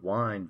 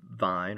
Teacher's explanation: when it was still pronounced with a w at the front but that sound changed in late Latin and French to a V sound